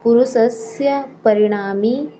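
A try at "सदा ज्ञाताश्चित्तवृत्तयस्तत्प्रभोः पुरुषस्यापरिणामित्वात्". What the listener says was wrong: पुरुषस्य बोला आपने पुरुषस है जी फिर से बोलिएगा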